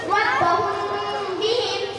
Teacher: মিম সাকিনের পর বা আছে এজন্য মিম সাকিনকে গুণা ও ইকফার সাথে পড়তে হবে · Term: ইকফায়ে শাফাবি